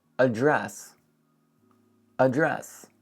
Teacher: And of course, the stress is on dress.